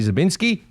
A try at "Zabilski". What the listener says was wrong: One of these days you'll get that right. You're adding an N. It's Zabilski.